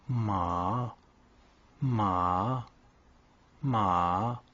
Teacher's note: Le quatrième ton est bas et descendant. Je le qualifierais d'explosif. Il est facilement identifiable.